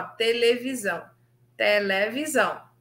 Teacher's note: abrem-se todas as vogais não só as pré tônicas isso é aquela vogal que vem antes da sílaba tônica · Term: abertura da vogal